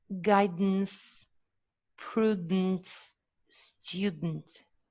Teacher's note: The schwa is not pronounced, or you shouldn't pronounce it in order to have it elided.